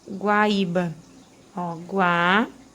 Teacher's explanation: A gente vai ter esse acento aqui num hiato e recai sobre uma paroxítona, porque a gente tem aqui a penúltima sílaba como sílaba mais forte